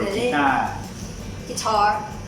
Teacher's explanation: But in both cases, ukulele, guitar, the last syllable is a falling tone